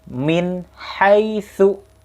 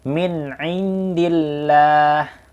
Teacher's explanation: yang mana nun mati atau tanwin bertemu dengan huruf-huruf izhar itu dibacanya jelas. Jadi tidak ada dengung, tidak ada gunnah